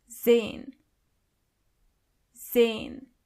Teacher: the letter S is not pronounced as S, but more like Z